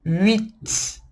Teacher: O T é como se fosse um TS.